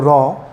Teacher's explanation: কম্পন জাত ধ্বনি বা কম্পিত ধ্বনি যেমন হলো র